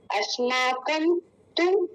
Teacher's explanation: तू छोटी ऊ की मात्रा है तो हम उसको जल्दी बोलेंगे